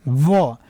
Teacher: अगर व बोलते हैं तो नीचे वाला जो दांत है आपके ऊपर वाले होठ से रगड़ करके उत्पन्न करेगा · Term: दंतु ध्वनि